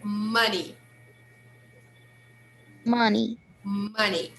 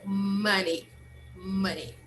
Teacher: Even though we write this word, we spell this word with O, we should pronounce with the sound of uh.